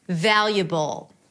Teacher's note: we have the B sound, schwa, and dark L.